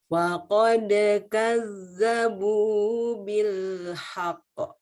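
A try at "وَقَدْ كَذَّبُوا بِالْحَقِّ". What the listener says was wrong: Aduh, terlalu cepat melepas kolkolahnya. Ingat itu tasdid. Kalau bil haqq nggak pakai tasdid. Iya, jadi ada bedanya antara yang nggak pakai tasdid sama yang pakai tasdid.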